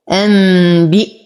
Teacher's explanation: أنبئهم، نون ساكن وبعدها الباء في كلمة واحدة فالحكم إقلاب مع غنة كاملة. أنبئ، أصبر على الهمزة، انتبه من عدم تحريكها لأنها ساكنة